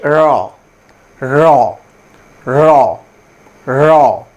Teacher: দাঁতের গোড়াতে গিয়ে আমাদের জিহভাটি টাচ করে একটু কম্পন দিয়ে র র উচ্চারিত হবে। এখানে বলা হচ্ছে র দন্তমূলীয় কম্পজ ধ্বনি। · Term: দন্তমূলীয় কম্পনজাত শব্দ